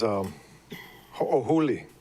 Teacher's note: Ho'o is with the little glottal stop between the O's, and huli is H-U-L-I.